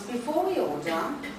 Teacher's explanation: there was a high head and a low rise in order.